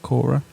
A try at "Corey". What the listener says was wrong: Why are you putting so much emphasis on the R and the I and the E? Just Corey.